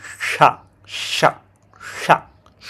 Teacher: প্রথমেই জিহ্বাটা আপনার অ্যালভিওলার রিজের পরের অংশটায় রাখবেন, তারপর উচ্চারণ করবেন শা শা শা, সু সু সু। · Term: শা সাউন্ড